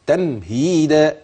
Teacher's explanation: اوعى تغني في الميم جامد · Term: اظهار شفوي